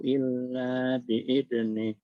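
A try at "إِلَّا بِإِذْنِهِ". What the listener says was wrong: Jangan lupa hu-nya Pak. Ini yang pembahasan kita masilahnya dan ada harokat yang memanjang hu berarti 4 atau 5.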